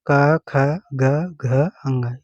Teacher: क, ख, ग, घ, अंग, ये भी जो है कंठ में आते हैं